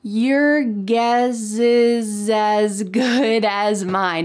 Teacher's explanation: in American English pronunciation, we often link the S with the vowel next to make a Z sound.